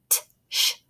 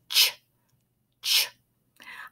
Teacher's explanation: For the ch sound, it's kind of a combination of a T plus our SH sound. You can hear t, sh.